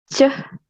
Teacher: a palatal affricate and voiceless sound